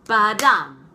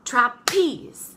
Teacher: a 2-syllable foot, and the first one is unstressed and the second one is stressed. So it gives this pattern, ba-dum. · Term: iamb